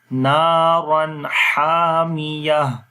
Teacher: तनवीन रा के ऊपर दो ज़बरें हैं तो यहाँ पर इजहार हो जाएगा, ठीक है। नून की आवाज़ को जाहिर करके पढ़ेंगे, नारन हामिया, क्योंकि दो ज़बरों के बाद हा आ गया है।